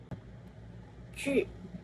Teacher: konsonan paduan, laminopalatal, tak bersuara, beraspirasi